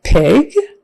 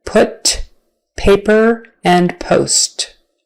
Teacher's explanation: talked about B already p is just the unvoiced version and your lips are going to come together and be forced apart by the air in a strong way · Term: P sound